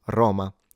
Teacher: a lot of Italians, however, do pronounce it Roma with an open O. So it is regionally variant or dependent. · So you're pronouncing it Roma, Ro, rather than Roma, O. Now a lot of Italians, however, do pronounce it Roma with an open O.